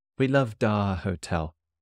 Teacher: Loved is the past tense, so the last letter D joins R